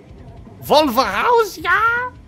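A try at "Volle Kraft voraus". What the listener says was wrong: Actually, it's not Vol, it's Fall, right? You pronounce it with F.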